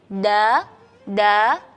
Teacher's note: kita tidak merasa ada angin di situ jadi da da tidak ada angin cuma ada suaranya saja da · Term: huruf Dal